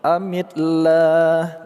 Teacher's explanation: lafaz Allah kita baca secara tarqiq atau tipis karena huruf sebelumnya berharakat kasrah